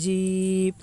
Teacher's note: یا ساکن سے پہلے زیر ہے اس لیے یا مدہ ہوگی، یا مدہ کو ایک الف کے برابر کھینچ کر پڑھیں